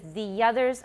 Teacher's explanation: it's not very strong don't overdo it don't say the others it's just a transitional sound to link the two smoothly so we can avoid a glottal stop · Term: linking glide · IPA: [ðiʲʌðɚz]